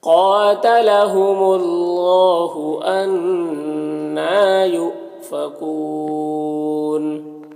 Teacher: نون مشدد غنہ ہوگا اور کھڑا زبر ہے، ایک الف کے برابر کھینچیں گے · یہاں پر حمزہ ساکنہ ہے واو کی شکل میں تو جھٹکا لگے گا